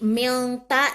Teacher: Samar dibacanya, tidak jelas huruf N-nya. Karena dia ikhfa,